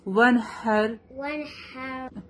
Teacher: ہا از come from the middle part of the throat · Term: حروف حلقی